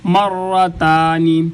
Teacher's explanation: باریک تا اس کو ادا کرنے کے لیے اوپر والے دانتوں کے ساتھ زبان کو لگائیں گے تو تا ادا ہوگی